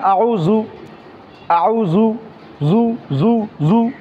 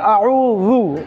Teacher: জাল নরম করে উচ্চারণ করতে হয় জিহ্বার আঘাত সামনের উপরে দুই দাঁতের আগার সঙ্গে লাগিয়ে উচ্চারণ করতে হয়